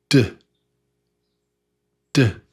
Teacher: the tongue taps behind your top teeth. It taps the sort of the the roof of your mouth and behind your behind your top teeth.